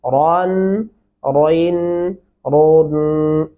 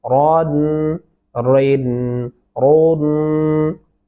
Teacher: यहाँ पर रॉ मोटा पढ़ा जाएगा पुर करके और इसको मोटी आवाज में ही पढ़ेंगे